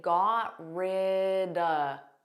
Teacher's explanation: you can take the word of and you can make it an unstressed sound and say duh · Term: connected speech